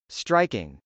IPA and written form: strˈaɪkɪŋ (striking)